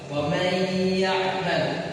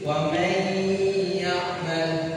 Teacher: Idgham bigunnah ini dibacanya dengan dimasukkan dengan gunnah.